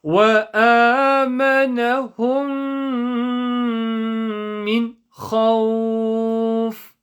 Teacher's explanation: The mim sukoon in amanahum joins on to the mim shadda in the next word. And we are applying the ghunna rule. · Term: idgham